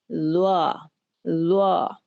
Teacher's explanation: जुबान की नोक को सामने के दो दांतों के साथ मिलाते हुए उसके साथ जब आप इसको लगाएंगे तो ये हर्फ अदा होगा, लेकिन इंतहाई नरमी के साथ, बगैर इसको दबाए और बगैर किसी किस्म की इसके अंदर सीटी की आवाज पैदा किए इंतहाई नरमी के साथ इसे अदा किया जाएगा